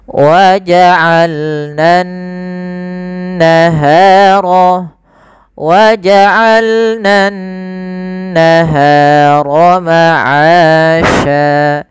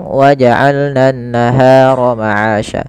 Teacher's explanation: maka cara melafalkannya adalah menahan dulu suara n ya waa'alnan naharo waa'alnan naharo maasya Tahan baru dilepaskan jangan langsung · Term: bacaan ghunah